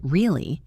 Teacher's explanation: If I say really, rising, falling, I'm showing skepticism. I don't believe it.